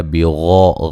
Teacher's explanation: غین کو موٹا ادا کریں گے